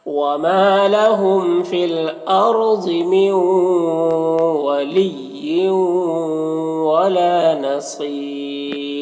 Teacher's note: اور یہاں پر وقف کریں گے تو را کی جو دو زیر کی تنوین سکون سے بدل جائے گا، تو پھر را ساکنہ سے پہلے یا ساکن ہے تو یہاں پر را کو باریک پڑھیں گے